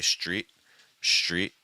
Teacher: when an S links with this TR sound it actually becomes like an sh so instead of saying street you may hear people say Street